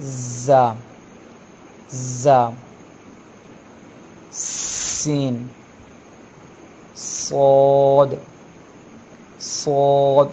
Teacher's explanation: इन हरूफ को अदा करते हुए थोड़ी सी सीटी जैसी आवाज़ निकलती है, इस किस्म की आवाज़ निकलती है। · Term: सीटी वाले हरूफ